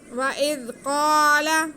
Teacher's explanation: حمزہ کے نیچے زیر ہے اور زال ساکن ہے، تو ہم حمزہ کا زیر زال کے ساتھ ملا لیں گے اور زال کو نرمی سے پڑھیں گے